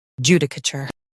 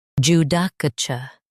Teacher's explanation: US ends with cur. UK ends with chur.